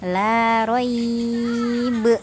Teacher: Jika di titik 3 yang pertama, maka berhentinya adalah la roib dengan memantulkan ba